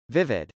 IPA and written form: vˈɪvəd (vivid)